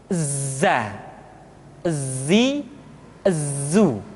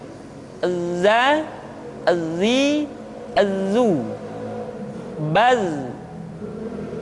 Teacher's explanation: Tetapi ingat, huruf za bersifat al-jahr. Artinya, ketika kita mengucapkan huruf za, suara kita mengalir, akan tetapi nafas tidak boleh mengalir